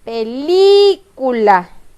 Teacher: La sílaba que yo pronuncio con mayor fuerza de voz al decir mi palabra es la sílaba li. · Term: sílaba tónica